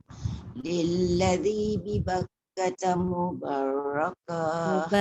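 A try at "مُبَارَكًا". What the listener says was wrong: Jangan mubar. Nanti kalau mubar takut dia jadi macam ada sabdu. Mubarakah. Lalladzi bi Bakkata mubarakan.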